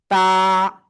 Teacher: জিহ্বার আগা, উপরের দুই দাঁতের আগায় লাগাবো না, গোড়ায় লাগাবো।